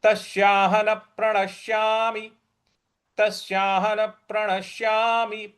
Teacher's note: प पर हमको बल लगाना है